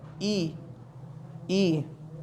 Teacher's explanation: ई का जो उच्चारण स्थान होता है वो तालुव्य होता है। जैसे बोल के देखेंगे ई, तो हमारी जो जीवा है वो तालु के ऊपर टच हो रही है, ई ई।